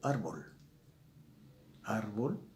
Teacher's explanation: su énfasis está en la penúltima sílaba